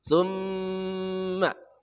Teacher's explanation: Mim bertasyid wajib dibaca dengung. Summa, dengungnya sempurna keluar dari rongga hidung kita. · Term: mim musyadadah, mim musyaddadah tajibul gunnah